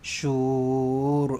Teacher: Tebalkan ra dekat belakang kerana huruf sebelumnya berbaris depan.